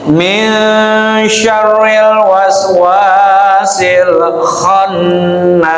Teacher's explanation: makhraj kha ada ini yang agak serak dikit, ya